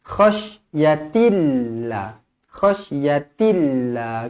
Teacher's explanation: Lafzul jalalah dibaca nipis kerana sebelumnya berbaris bawah.